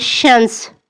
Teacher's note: یہ حرف ادا کرتے وقت زبان کا درمیانی حصہ تالو کے قریب آتا ہے اور ہوا رگڑ کھا کر نکلتی ہے۔ چلیں اسے محسوس کریں، جیسے ہلکی سی ہوا درخت کی شاخوں سے ٹکرا کر سرسراہٹ پیدا کرے، بس یہی سرسراہٹ شین کی آواز ہے۔ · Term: حرف شین